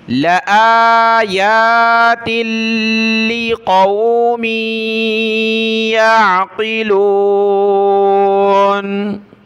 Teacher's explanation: لام کو نہیں کھینچنا، حمزہ کو اور یا کو کھینچنا ہے